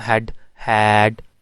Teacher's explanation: हैड में आपका lower jaw बिल्कुल थोड़ा ज़्यादा ओपन हो जाता है, यानी आपका माउथ ज़्यादा ओपन हो जाता है।